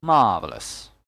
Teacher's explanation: there are three syllables marvelous that's why one of these syllables must have a stress on them so it's on the first syllable marvelous American English has the R sound so it's pronounced marvelous